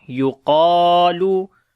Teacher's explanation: Qaf and alif we read in heavy sound, and also we long